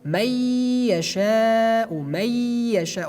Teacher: we read it based on idgham, may yasha'u, may yasha'u. We remove the noon.